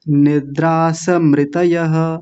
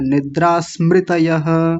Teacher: निद्रास आधा है आधा ही बोलना है